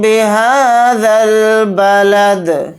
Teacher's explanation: ذال کو ڈائریکٹ لام ساکن کے ساتھ ملا کر پڑھیں گے، یہ دونوں الف نہیں پڑھے جائیں گے۔